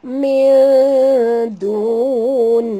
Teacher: Masukkan bunyi nun terus ke dalam lam disertai dengan jud dan lam di tengah-tengah. Lam pada lafaz jalalah dibaca tipis kerana nun berbaris di bawah